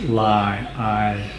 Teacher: to play with so it's kind of a glide okay so this sound combines a long a and a y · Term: diphthongs